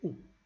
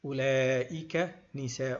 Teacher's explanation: this waw is not pronounced. We do not say ula. We say u. We make it short.